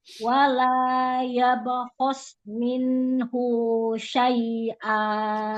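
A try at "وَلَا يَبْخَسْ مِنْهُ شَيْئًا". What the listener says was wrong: Jangan ada mat. Wala yabkhos minhu syai'a.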